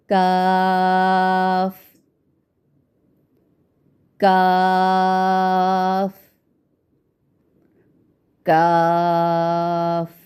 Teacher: ज़बान की जड़ को कव्वे के करीब तालु पर लगाकर बारीक आवाज़ में अदा करते हैं। तो काफ में बारीक आवाज़ है और जहाँ से आपका क़ौफ़ अदा होता है उसके थोड़ा सा मुंह की जानिब जहाँ सख्त तालु है ना, जहाँ से सख्त तालु स्टार्ट होता है वहाँ पर आपकी ज़बान की जड़ लगती है।